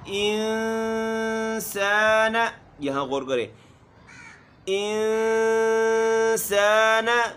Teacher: یہاں جو ہے اخفا کریں گے، آواز ناک میں لے کر جائیں گے، لیکن غنّے کی طرح نہ ہو